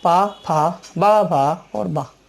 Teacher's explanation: अंत में आती है ओष्ठ वर्ग। ओष्ठ वर्ग में पा वर्ग आता है, ओठों का खुलना और बंद होना,